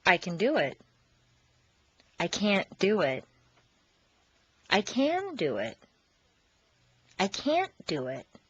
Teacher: Reduce the positive can to kun and stress the verb. Make the negative can't sound very short and stress both can't and the verb. This will contrast with the positive emphasized can, which is doubled, and the verb is not stressed.